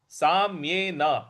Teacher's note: सा के बाद आधा म है उस पर हमको आघात देना है।